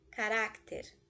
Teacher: penúltima sílaba é a sílaba tônica ou seja é uma grave uma grave terminar em consoante leva